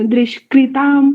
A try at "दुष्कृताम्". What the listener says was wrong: द्रु है क्या? देखिए, दू है या द्रु है? फिर से बोलिए, दू। दुष्कृताम।